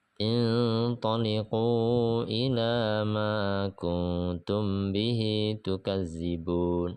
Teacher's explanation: idgham mutamasilain, dan ikhfa syafawi dengungnya 2 harokat